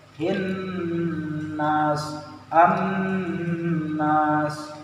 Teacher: Jadi dengung, agak dilamain dikit. Kan seperti yang tadi kan, ilahin nas digantung dikit gitu ya.